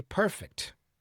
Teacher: So, perfect with the stress on the first syllable, that's the adjective, okay? Perfect with the stress on the second syllable, that's the verb.